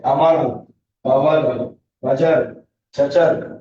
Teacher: এরকম র জিহ্বার আগে কাঁপবে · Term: কম্পনজাত